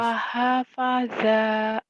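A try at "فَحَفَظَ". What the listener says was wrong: Nggak ada yang panjang.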